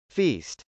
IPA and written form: fˈist (feast)